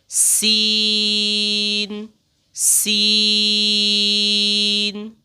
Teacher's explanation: سین کی ادائیگی میں سیٹی نکلتی ہے